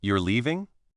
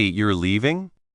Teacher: if they say, You're leaving? with a rising tone, it clearly sounds like a question